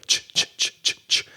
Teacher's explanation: The SH sh and the ch is with more air. So you're throwing out more air with the CH sound.